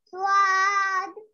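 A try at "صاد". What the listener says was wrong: हाँ, वाद नहीं, स्वाद नहीं, सौद।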